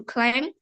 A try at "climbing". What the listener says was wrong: wait, not climbing, okay, climbing, climbing. That B is, doesn't have the sound, so climbing, okay? B has no sound. Climbing.